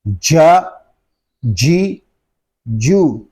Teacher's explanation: جیم کو جب ادا کریں گے تو زبان اور تالو کا درمیان والا حصہ ہم استعمال کریں گے. جب جیم کو ادا کرتے ہیں تو اس کی آواز منہ میں پھیل جاتی ہے.